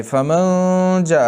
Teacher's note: جاء مدی متصل، مدی واجب، مدی لازم، 3 الف کی مقدار لازم پڑھا جائے گا. اور کیوں کہ حروف مدہ کے بعد حمزہ آیا ہے.